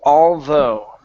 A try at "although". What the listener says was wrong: Now end with an oo sound. You're ending with a g, saying although.